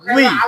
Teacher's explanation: হ্যাঁ, ডাইরেক্ট জুই বললে এটা হবে না, মুখ দিয়ে জুই উচ্চারণ করা যাবে না, উচ্চারণ করতে হবে জিব্বা দিয়ে। জিব্বার মাঝখানটা, জিব্বার গোড়া, জিব্বার আগা, উপরে তালুতে লাগা দিও জুই। হ্যাঁ, এটা জিব্বার ব্যবহার।